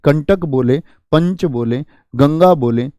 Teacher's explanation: लेकिन यहां पर आप बोले चंद्र, बोल के देखिए, नाक पर एक जोर जाएगा आपके। दंत बोलेंगे आप, नाक से वायु निकलेगी।